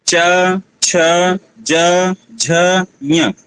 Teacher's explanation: जिह्वा जो है तालु की तरफ ही जा रही है।